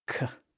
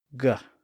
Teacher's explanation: Those are sounds that are made in the back of the mouth in the throat region. The K sound, K, is voiceless, but if we constrict the vocal folds and make them vibrate, the sound becomes voiced, and it switches from K to G.